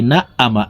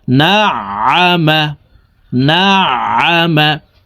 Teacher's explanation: আইন হরফকে হালকের মধ্যখান থেকে উচ্চারণ করব। আমরা অনেকে আইনের উচ্চারণ সঠিকভাবে পড়তে পারি না, হামজার উচ্চারণ করে থাকি, না আমা এভাবে পড়ে থাকি।